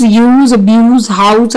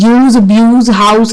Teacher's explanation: Usually the last sound is different in nouns and verbs. Example, the nouns use, abuse, house are pronounced with S sound at the end. The verbs use, abuse, house are pronounced with a Z sound